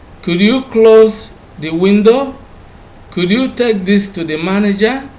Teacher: requests are made with the rising tone